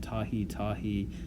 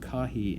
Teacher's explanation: apparently the T's all, change to K in Hawaiian